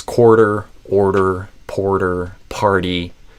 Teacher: as you're holding the R sound, you kind of flap the tip of your tongue, kind of tapping it against that uh front of the roof of your mouth a little bit behind your upper teeth.